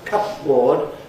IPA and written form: ˋkʌpbɔːd (cupboard)